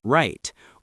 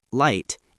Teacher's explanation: The R sound needs the tongue to curl slightly back while the L sound uses the tongue touching the top of the mouth.